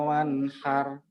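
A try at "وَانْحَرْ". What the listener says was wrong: Ro-nya tebal, tafkhim ro, wanharu, kausaru. Bukan har, tapi haru. Haru. Ya, tinggal di oronya tebal ya.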